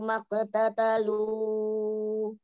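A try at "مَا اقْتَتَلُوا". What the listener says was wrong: Umi maqtatalu tadi panjangnya berapa, Mi? Iya, kebanyakan Umi.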